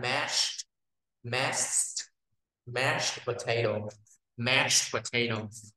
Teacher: Thì cái chữ mash này nè ha, âm cuối là s dài và t